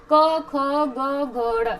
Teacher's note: यहाँ है ना हमारा जो इधर काकल होता है ना, कंठ, कंठ के पास इधर ये हमारा यहाँ पे काकल होता है, तो इसको क से क वर्ग, क ख ग घ ड़, ये हमारे कहाँ आएंगे, कंठे में आएंगे।